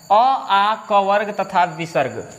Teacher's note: ठीक है, तो देखिए ये है हमारा कंठ और कंठ से उच्चारण होता है अ आ क वर्ग तथा विसर्ग। अ आ क वर्ग एवं विसर्ग। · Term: कंठ्य वर्ण